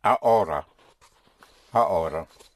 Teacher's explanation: the H is not pronounced in Spanish